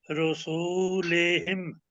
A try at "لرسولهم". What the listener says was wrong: سین کو لمبا نہ کریں.